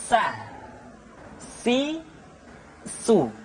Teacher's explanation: ujung lidah di antara dua gigi seri kita. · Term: huruf sa